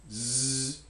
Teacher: z is a voiced alveolar fricative